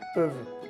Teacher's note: Y la U es E, peuvent. Y la ENT al final no suena